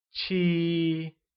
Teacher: 7 becomes 七 and is said with a high level tone